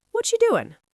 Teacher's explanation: R is gone. U becomes cha.